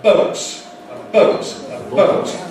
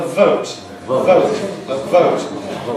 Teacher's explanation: You know about ‘the two lips’ (bilabial) compared with ‘the lip and the teeth’ (labiodental).